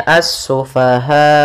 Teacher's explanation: Maka cara membacanya as-sufaha. Kemudian dimatikan hamzahnya dengan sifat jahar dan syiddahnya hamzah, yaitu tertahannya nafas dan tertahannya suara.